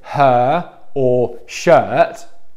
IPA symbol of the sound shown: ɜ: